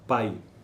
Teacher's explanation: Pai, P, é a margem esquerda, núcleo é o A e a margem direita o I, novamente, que é o Y, né? Que é como se fosse uma vogal um pouco mais fraca. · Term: ditongo decrescente